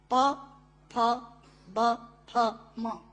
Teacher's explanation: प, फ, ब, फ, म दोनों होंठ मिलाकर बोले जा सकते हैं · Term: ओष्ठांग